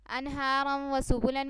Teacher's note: انہارم و سبلن میں جو ہے تنوین ہے، تنوین کے بعد حروف یرملون میں سے واو آ گیا ہے، اس لیے ہم نے یہاں پہ اس کو ادغام کر کے پڑھا، یعنی کہ را کو واو میں مدغم کر کے پڑھا.